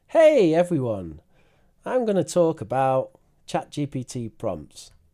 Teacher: has a really broad intonation range